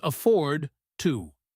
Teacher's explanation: The words are hard and crisp. There is almost no linking between afford and to.